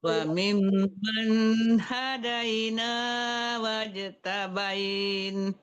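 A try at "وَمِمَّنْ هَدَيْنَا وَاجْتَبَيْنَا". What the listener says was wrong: Maaf ya, tadi berhentinya enggak betul ya. Tabaina apa? Cuma tadi. Ya tadi tabain dibacanya.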